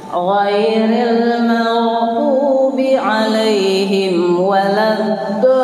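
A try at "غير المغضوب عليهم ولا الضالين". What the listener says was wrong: Coba ladd, jangan lad. Kalau digusil ladnya tuh dal, dal juga bukan sebenarnya. Jangan digusik lidahnya saat laud tengah kapak atas. Laud do, bantu bibirnya dimunyong. Adnya diingat-ingat. Nah, berhati-hati juga pada musaqqal kilminya. Waladdad. Nah, kalau mau dilakukan itu musaqqalnya waladdad.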